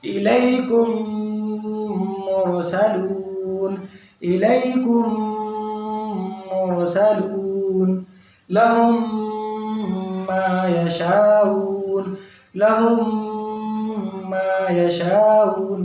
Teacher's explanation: ہم نے بتایا پہلے بھی کہ ساکن تشدید ایک جگہ آئے گا تو ساکن کا ویلو کم اور تشدید کا ویلو زیادہ ہوتا ہے، لیکن یہاں میم ساکن کے بعد میم آنے کی وجہ سے میم کو روکے رکھیں گے